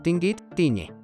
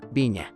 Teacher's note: apareció este sonido nasal palatal